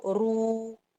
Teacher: را یہاں پر موٹا ہے کیونکہ وہ پیش کے ساتھ ہے، اور تھوڑا لمبا ہے وہ واو کے ساتھ. را پیش واو، رو بھی.